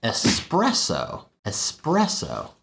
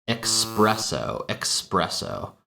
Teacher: The next example is very similar to especially, where we have an S sound that gets replaced by an X or K sound